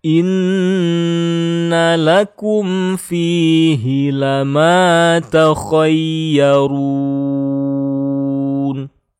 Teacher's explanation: Ada gunnah musyaddah ya, tasydidnya ditahan ya, digunnahkan.